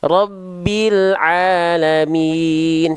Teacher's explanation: tinggal ain jangan kepanjangan. 2 harokat. Jangan sampai rabbil alamin.